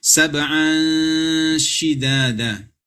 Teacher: unsur n pada tanwin itu tidak boleh dibaca jelas atau dalam artinya dibaca samar. Unsur n-nya itu tidak boleh kentara. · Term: ikhfa haqiqi